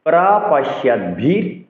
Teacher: ভীর মহাপ্রাণ উচ্চারণ করতে হবে